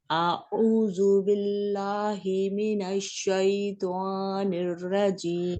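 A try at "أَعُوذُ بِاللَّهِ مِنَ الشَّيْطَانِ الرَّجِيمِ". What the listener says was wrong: واو نہ لائیں اپنی تو میں میری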